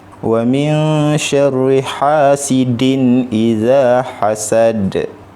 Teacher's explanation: Ini tanwin bertemu dengan alif, jadi dia tak ada dengung, dia jelas. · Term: izhar halqi